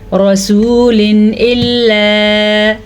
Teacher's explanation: اگر حروف ہلکی میں سے حمزہ ہا، عین ہا، غین خا، مطلب ان 6 میں سے کوئی سا بھی ایک حرف آ جائے تو تنوین کی آواز کو ظاہر کر کے پڑھتے ہیں